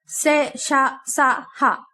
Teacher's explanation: ఇవి గాలితో ఉచ్చరించబడతాయి అందుకే వీటిని ఊష్మాలు అంటారు